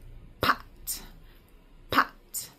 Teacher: So we say P P which mimics the lips together tight and then they explode